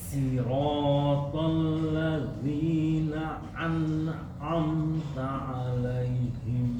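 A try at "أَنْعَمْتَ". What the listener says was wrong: Coba A, Pak. Kalau Bapak baca na'an, seakan-akan ada tenggorokan yang ikut campur.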